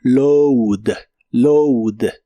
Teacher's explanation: En lugar de a lleva un sonido u